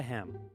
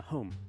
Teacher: the long English A vowel sounded more like an O to the Normans